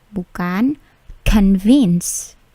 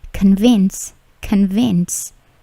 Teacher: Bunyi plosive di K-nya atau C-nya itu hanya sedikit.